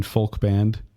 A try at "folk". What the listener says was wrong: pronounces the L in full.